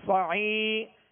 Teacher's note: اور شروع میں صاد ہے، صاد حروف مستعلیہ میں سے پر پڑھیں گے اور صاد کو سیدھی کی آواز میں ادا کریں گے. صعی، یہاں عین کے بعد یا مدہ ہے، ایک الف کی مقدار کھینچ کر ادا کریں گے